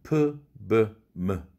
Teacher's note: 두 입술이 붙었다 떨어지면서 나는 음입니다. 자음에서는 프, 브, 무 이것이 있죠.